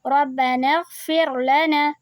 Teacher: تو ہم جب اس کو ملا کر پڑھیں گے تو نون غین سے مل جائے گا، تو یہ حمزۃ الوصل ہم نہیں پڑھیں گے، ہم سیدھا نون کو غین سے ملا کر پڑھیں گے